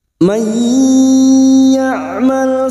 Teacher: Man ya'mal su'an yujza bihi wa la yajid lahu min dunillah. Mai nun sukun bertemu ya idgham bi gunnah